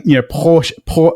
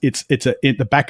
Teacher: If you're saying Porsche, it's at the back of the throat. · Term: uvula R